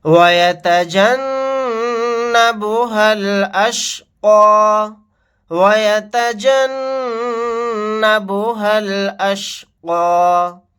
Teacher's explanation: نون کے اوپر تشدید ہے، یہاں پر غنہ کر کے پڑھیں گے. ہا کو ڈائریکٹ لام ساکن کے ساتھ ملائیں گے.